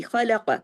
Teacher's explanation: اب دیکھیے آگے چونکہ تشدید ہے تو قاف جا کے سین میں جڑے گا، خلق۔ اس میں خواہ اور قاف ہیوی، لیکن بیچ میں جو لام ہے وہ باریک پڑھا جائے گا